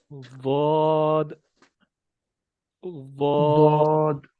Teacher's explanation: زبان کی جو سائیڈیں ہیں وہ اوپر والے دانتوں کے دونوں جو سائیڈوں والی ہماری داڑیں ہیں نا، ان دونوں داڑوں کے ساتھ لگیں گی۔ ٹھیک ہے، یہ ہے ضاد کا مخرج۔